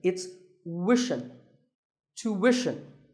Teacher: it's not ishin, it's wishin. Tuition. You have to put the w sound there.